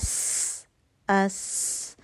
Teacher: سین کے لیے آپ کی زبان جو ہے وہ پیچھے سے دانتوں کے اوپر نیچے کے درمیان میں پھنس رہی ہے، کہیں پہ اس کی ٹپ نہیں لگ رہی. اور سین کے اندر اسپیشل کوالٹی صفیر کی سیٹی والی آواز آئے گی جو کہ ف میں نہیں آئے گی.